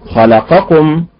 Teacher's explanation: خلقكم بالنبر على حركه الخاء رزقكم بالنبر على حركه الراء يعظكم بالنبر على حركه الياء